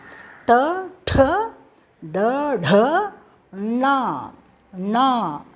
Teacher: நாக்கை உள்ள உள்ள உள்ள அண்ணத்தில் வைத்து பலமாக உச்சரிக்க வேண்டும். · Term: மகாபிராண் ட